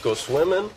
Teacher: syllable indicates where the accent or stress is in this case the accent is in the first syllable corresponding to swim